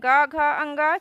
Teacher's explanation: जिन वर्णों के उच्चारण में स्वर तंत्रों में कंपन होता है उन्हें घोष या सघोष कहते हैं